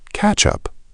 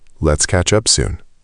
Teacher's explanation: In fast, natural speech, this often blends together. Catch up, almost one word. Let's catch up soon becomes let's catch up soon.